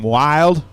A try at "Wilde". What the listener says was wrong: It's Wildy. The E has an accent mark on it. Therefore, you pronounce it. Wildy. It's W-I-L-D-E. Wildy.